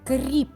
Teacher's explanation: приголосний твердий позначаємо однією рискою другий звук р спробуйте дітки вимовити р вимовляється м'яко Отже це приголосний м'який звук